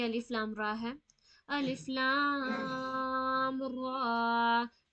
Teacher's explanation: لام کو 6 سیکنڈ کے لیے کھینچیں گے. را میں تو کھڑی زبر ہے تو اسے اتنا نہیں کھینچیں گے.